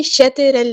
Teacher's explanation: شطر ال، تو ہمارا ہیوی لیٹر ہے، پورا ادا کریں گے، را بھی ہمارا ہیوی لیٹر ہے، پورا ادا کریں گے، موٹا ادا کریں گے